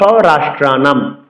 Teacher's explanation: অনুসার যখন কোন শব্দের পরে থাকবে অনুসার উচ্চারণ ম হসন্ত করতে হবে